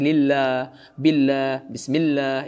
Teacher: Tebalnya itu pada khusus lafaz Allah SWT, yang mana lafaz Allah ini sebelumnya berharakat fathah dhammah. Adapun lafaz Allah yang sebelumnya berharakat kasrah seperti lillah, billah, bismillah, itu dibaca lam dengan lam yang biasa tidak tebal.